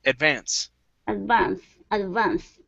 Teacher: so our stress is at the end instead of Advance it's advance advance advance very good and the